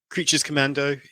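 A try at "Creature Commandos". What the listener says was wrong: So unpopular, you said it wrong. You said Creatures Commando. Creature Commandos. You put the S in the wrong place.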